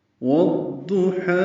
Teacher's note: ضاد پر ہے، موٹا پڑھیں گے، حروف مستعلیہ میں سے ہے، اس پر پیش ہے، جلدی پڑھیں گے. ہا وسط حلق سے ادا کریں گے اور 2 حرکات لمبا کریں گے